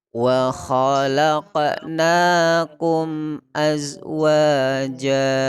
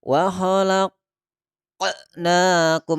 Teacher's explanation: Qaf itu disebut dengan qalqalah sugro. Kenapa sugro? Karena berada di pertengahan ayat. Maka jangan berlebihan.